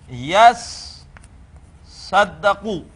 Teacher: جب دو سواد جمع ہو گئی اب تو ان کا ادغام کر کے اسے کر دیں گے یس صدقو۔ اب جب آپ نے اسم الفاعل بنانا ہوگا، اسم الفاعل کے لیے علامت مضارع پر ہوتی ہے، علامت مضارع ہٹا کر میم لگاتے ہیں پیش والی، اور عین کلمے پر دیتے ہیں زیر، اور لام کلمے پر دے دیتے ہیں تنوین۔